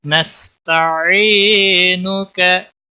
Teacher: सीन पर कलकला नहीं होना चाहिए। या मद्दा है, एक अलिफ के बराबर खींच कर पढ़ेंगे।